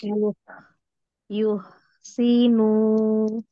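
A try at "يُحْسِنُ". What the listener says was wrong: Belum ke haknya, masih cenderung ke kho. Di tenggorokan dengan yo yo terus yo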